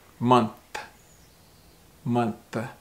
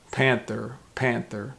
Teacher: month that the tongue is a little bit more through the teeth like this well panther the tongue is kind of behind the top teeth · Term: th sound